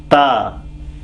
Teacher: ta is pronounced when the tip of the tongue is touching the front row of the teeth, the upper one